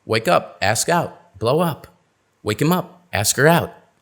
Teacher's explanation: where's the stress it's on the preposition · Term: phrasal verbs